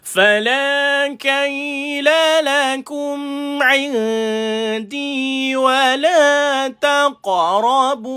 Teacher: nama dia adalah qalqalah kecil sebab dia duduk di tengah-tengah kalimah. Lantunan dia lantunan kecil.